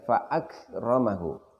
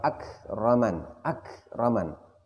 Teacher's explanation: Perhatikan pada fa akramahu. Ketika kita mengucapkan fa akramahu, maka di situ terasa bahwa kita menahan suara terlebih dahulu, baru kita melepaskan nafasnya. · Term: hamz